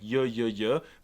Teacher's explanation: in normal Spanish the Y and the Double L both make the Y sound